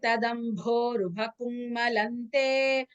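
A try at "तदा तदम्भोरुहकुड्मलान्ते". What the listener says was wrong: Kudmalante. Kudma. I'm not able to hear the Kudma. Kudma. Da plus ma. Kudmalante.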